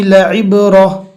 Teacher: عین کو حلق سے اچھے سے ادا کرنا ہے